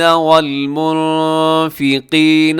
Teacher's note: یہاں نون ساکن کے بعد فا ہے تو یہاں اخفا کریں گے